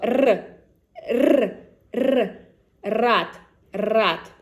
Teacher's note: So your lips should be slightly stretched and the tip of the tongue should touch the ridge behind the upper teeth. The sides of the tongue should be pressed against the upper molars and the shape of the tongue should resemble a spoon. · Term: hard R